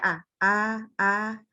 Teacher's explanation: istifal tuh pangkal lidah turun, infitah mulutnya kebuka. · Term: huruf yang tipis